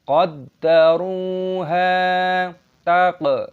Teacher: qafnya berharokat sukun, kita qalqalah, kita pantulkan suaranya. · qaddaru memiliki wau sukun, jadi ra panjang, dua hitungan. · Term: Mad Thabi'i